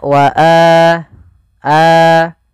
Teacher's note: panjangnya adalah dua harakat sebagaimana Mad Thobi'i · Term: mad badal